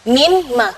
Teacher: Mimma, ketika digabung mimma, jadi nunnya tidak kelihatan. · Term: hukum idgham